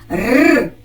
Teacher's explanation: цей складний приголосний звук вимовляється твердо тому позначається одною рисочкою